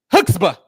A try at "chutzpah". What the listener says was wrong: No, why you say hooks? Why you say hooks? I feel like you have to say it like really fast.